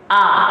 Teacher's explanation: huruf A itu di aqsal halqi misalnya, di pangkal tenggorokan